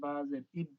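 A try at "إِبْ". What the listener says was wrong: এই কলকলা হবে না, কলকলা হবে না।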